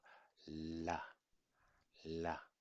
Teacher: it's more like snapping so fast touched but after that it moves away so it has to be released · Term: japanese la sound